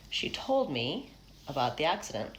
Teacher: Okay, so rises up to the stress syllable and then falls off. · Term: pitch contours